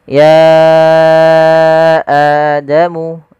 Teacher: panjangnya untuk mad badal sendiri Cukup dua harakat sebagaimana mad thai'i